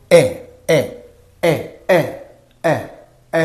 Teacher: in that way e e e e e e means E when you say e so here the tongue is mid positioned